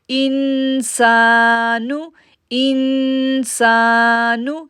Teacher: ان پہ ہم غنہ کر رہے ہیں، اکفا غنہ، کیونکہ نون ساکن کے بعد لیٹر سین ہے۔ نون ساکن کے بعد جب لیٹر سین آتا ہے تو وہاں پر اکفا غنہ کرتے ہیں۔